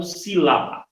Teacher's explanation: Por exemplo, na própria palavra sílaba, nós temos aí a palavra sílaba, é uma palavra trissílaba, ou seja, que possui 3 sílabas. Aonde a sílaba mais forte dela, que eu pronuncio com mais força, é a sílaba si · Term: sílaba tônica